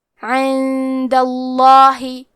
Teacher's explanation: یہاں لفظ الجلالہ مطلب کلمت اللہ کے لام کا حکم ہے تفخیم، تو یہاں ہمیں حرف اللام کو موٹی آواز میں پڑھنا ہے